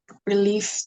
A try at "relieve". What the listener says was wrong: Relieve, not release. Y kéo dài.